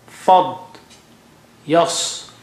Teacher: Fad is very thick and high, and yas also very thick and high.